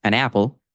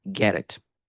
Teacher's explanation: connecting a final consonant sound to an initial vowel sound in the following word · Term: linking